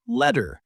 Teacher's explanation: When the letter T is in the middle of a word, especially in American English, it sometimes changes to a D sound.